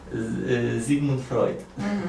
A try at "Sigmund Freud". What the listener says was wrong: C, it's not a Z. It's S.